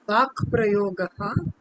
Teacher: ga cannot stand in front of pa. So it becomes ka. Vag prayogaha iti. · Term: Chartva